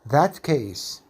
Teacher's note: Alveolar plus velar becomes velar plus velar. The alveolar CF changes to be like the velar CI. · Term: Assimilation of place of articulation